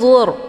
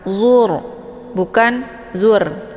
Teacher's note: Maka ra ini dibaca tebal. Cara bacanya yaitu posisi pangkal lidah juga terangkat ke langit. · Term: tafkhim